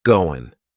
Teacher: That final G in the word going is going to be cut off, and we'll just say, goin'.